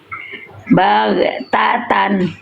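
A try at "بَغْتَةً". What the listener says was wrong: Oke, gak apa-apa ini masih agak mantul.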